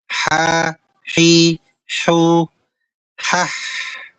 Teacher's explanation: Bedakan dari tenggorokan bagian bawah dengan ha yang keluar dari tenggorokan bagian tengah. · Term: wasathul halqi, wasatul halqi